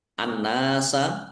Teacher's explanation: Ditandai nunnya ada tasdidnya. Nun tasdid dibaca ghunah atau mendengung ditahan biar tampak dengungannya.